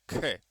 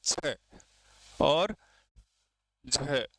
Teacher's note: महाप्राण स्वास की मात्रा अधिक लगानी पड़ती है।